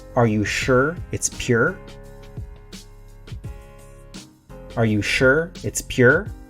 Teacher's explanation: in my accent i didn't don't say ur i say er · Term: west coast accent, West Coast accent